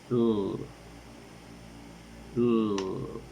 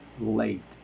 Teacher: According to voicing, it is voiced. According to the place of articulation, it is alveolar. And according to the manner of articulation, it is liquid.